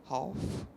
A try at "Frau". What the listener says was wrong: FR. No. Before the ow. Say ouch. Frouch. Now no ch.